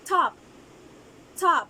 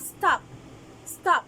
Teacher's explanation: for example for the aspirated and sound we have top top we have the aspirated sound T · This has two allophones, the aspirated T and the unaspirated T.